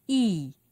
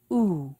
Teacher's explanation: high back vowel sound because the tongue is high in the back of the mouth